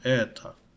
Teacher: E is stressed, so O sounds like A.